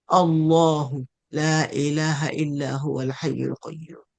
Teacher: If you begin recitation with the name of Allah, the lam is pronounced heavy